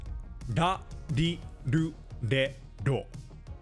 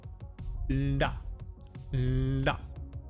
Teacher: Da But perhaps a better cue for practicing this letter is to think of an L and D. You want the starting tongue position of L. L L But you want the tongue hit of D. Da But just a bit softer. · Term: Japanese R